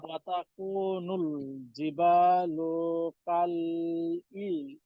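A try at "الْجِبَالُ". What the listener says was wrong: লুতে টান নাই, ওয়াতাকুল জিবালু, এই লুতে টান নাই।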